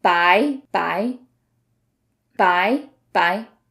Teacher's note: the second bye is kind of softer without much emphasis.